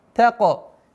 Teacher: Уходим на калкаля, твердое произношение каф.